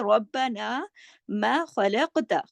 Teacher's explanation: खलक़ खा मोटा और काफ पे कलकला, क्योंकि कलकले वाला हर्फ है ना, कुतुबिन जद्दिन में से खलक़ता, और मोटा भी पढ़ा जाएगा, कलकला भी।